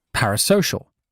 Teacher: It's a four syllable word with the primary stress on the third syllable and the second stress on the first part.